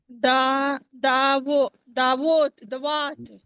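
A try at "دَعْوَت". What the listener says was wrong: दवात होता तो दाल वाव, सिगन वाला जो हर्फ है वो दवात है। ये है दा दा, उसके बाद वाव के ऊपर जबर है, तो हम क्या बोलेंगे, वात वत, वत नहीं पढ़ेंगे, दा वत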